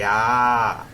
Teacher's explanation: मुंह पूरा खोलेंगे, आ, है ना, आ बोलते हैं ना, इसमें ओठ गोल नहीं बनता है। · आ बोलेंगे, जीभ का आपको जो हमारे जीभ का सबसे पिछला हिस्सा आएगा इसको बोलने में, है ना, जीभ का बीच से नहीं बोलेंगे, पीछे के हिस्से से बोलेंगे, लेकिन इसमें गोल ओठ नहीं बनेगा, मुंह पूरा खोलेंगे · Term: विपरीत स्वर